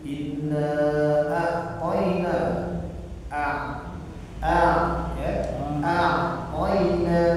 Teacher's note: Jadi ainnya tadi disebutkan dengan jelas, jangan jadi hamzah.